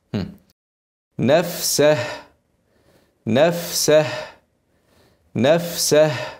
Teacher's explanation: في كم حرف مهموس في كلمتين وبيخرج فيهم همسك كتير جدا فلازم تعين شويه هواء للهاء لان لو ما عنتش صعب جدا ان انت تبينها وتظهرها وهيكون غصب عنك فانت لازم تسيب شويه هوا تعينهم كده عشان